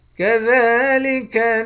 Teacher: کھڑے زبر کو ایک الف کی مقدار کھینچ کر پڑھتے ہیں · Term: کھڑا زبر